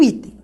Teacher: penúltima sílaba é a mais forte. Essa palavra é uma paroxítona.